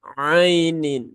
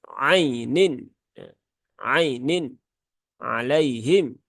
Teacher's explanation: Ai dia ada huruf lin di sini ya, huruf lin. Maka dibaca dengan lembut saja, tidak perlu disentak ya.